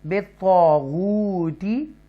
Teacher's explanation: یہاں واو مدہ ہے اور اس لیے ہم اس کو واو کو تھوڑا سا کھینچیں گے